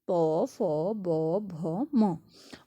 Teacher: इनका जो उच्चारण स्थान क्या है, ओष्ठ है, जिसको हम क्या कहते हैं, ओष्ठ्य